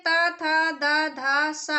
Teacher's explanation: जो ता था दा धा सा है, इनका उच्चारण स्थान दंत्य होता है